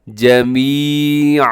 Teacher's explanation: دو زبر کو الف مدہ کی طرح کھینچ کر وقف کرتے ہیں، جمیعا، اسے ایسے وقف نہیں کرنا جمیعا، غلط ہو جائے گا، جمیعا۔